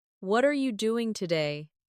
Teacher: For example, when someone says, "What are you doing today?" the stress usually falls on what and doing. What are you doing today?